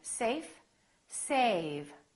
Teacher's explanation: Notice how A was longer with the V than with the F.